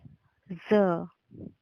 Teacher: ज को बोलने के लिए जीभ को दांतों से टच करके बोलते हैं। बोलकर देखिए, ज।